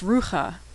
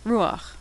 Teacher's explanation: So you'd think this was pronounced rucha, but when the last letter is chet and it's followed by patach, the patach is pronounced first